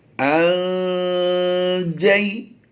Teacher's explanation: नून साकिन के बाद हरफ जीम जो है हुरूफ़े इख्फा से है, तो यहाँ पर हम इख्फा करते हुए गुन्ना ज़माने की आवाज़ दे देंगे। हमजा नून ज़बर अन जीम या ज़बर जई, यहाँ पर या लीन है, इसको लंबा नहीं करना।